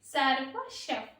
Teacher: రెండో పాదంలో చూసుకుంటే సర్వశఫ్, ఆ షా పక్కన విసర్గ ఉంది, ఆ విసర్గ అనేది మనకి పా అనే అక్షరం ముందు వచ్చింది కాబట్టి దాన్ని ఎఫ్ సౌండ్ తో పలకాలండి.